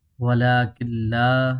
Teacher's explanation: ادغام بلا غنہ ہے، یعنی اس میں غنہ نہیں کریں گے